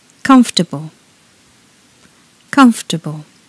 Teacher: When we say this word in British English, there are only 3 syllables.